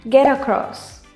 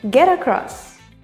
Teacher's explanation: Get across. T sounds more like a D. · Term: linking